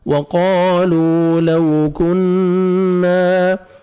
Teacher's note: آپ نے کاف کو باریک پڑھنا ہے, اور نون مشدد ہے, غنہ کریں گے. الف مدہ, نون کو 1 سیکنڈ کھینچنا بھی ہے.